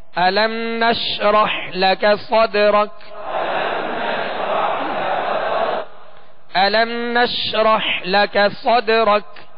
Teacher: حروف قلقلہ میں سے دال ساکن ہے، اس پہ قلقلہ کریں گے، اور آخر میں کاف کو ہم ساکن اس لیے کریں گے کہ یہاں ہم نے وقف کیا. · نش آواز شین کو ادا کرتے ہوئے منہ میں پھیل جائے گی مگر اس میں بھی قلقلہ نہ ہو۔ نشرح حا کو وسط حلق سے واضح ادا کرنا ہے۔ · لکا دونوں پر زبر ہے، اس کو کھینچنا نہیں، بغیر کھینچے منہ اور آواز کھول کر ادا کرنا ہے۔